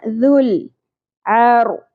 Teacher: ذال نرمی سے ادا ہوگا، لام ساکن پہ قلقلہ نہیں کرنا